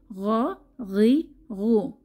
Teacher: গইনের মাখরাজ হচ্ছে কণ্ঠনালীর শেষ ভাগ থেকে